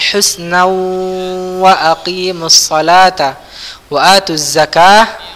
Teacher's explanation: ingat dia ini idgham bi gunnah, agak disengaukan sedikit